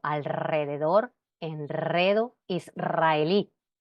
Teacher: después de l n o s se pronuncia vibrante como alrededor enredo Israel